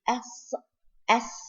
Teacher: it comes from the tip of the tongue with the lowest part of the lower teeth so sound goes passing between the upper and lower teeth